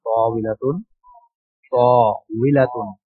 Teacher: ত আলিফ ওয়াও লাম তা, তাবিলাতুন, তাবিলাতুন। ওয়াওর সময় গোল, দুই ঠোঁট গোল হয়ে যাবে।